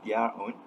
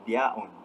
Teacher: Usually in received pronunciation, we would pronounce their own as their own with the insertion of r sound. However, the interviewee did not insert the r sound, basically pronounced it as their own. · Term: intrusive r